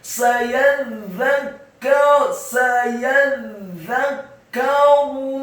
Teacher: ra-nya dibaca tafkhim tebal, dhamma satu harokat saja. Sayadzakkaru man yakhsha.